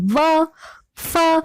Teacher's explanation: तो ऊपर का दांत नीचे के होठ को स्पर्श करता है। जब हम व का उच्चारण करते हैं तो हम देखते हैं कि व, तो हमारा जो ऊपर के दांत होते हैं वह नीचे के होठों को स्पर्श कर रहे हैं · तो ऐसे वर्णों का उच्चारण ओष्ठ्य कहलाता है। दंतोष्ठ्य, ऐसी ध्वनियां जिनका उच्चारण ऊपर के दांत और नीचे के होठ की सहायता से होता है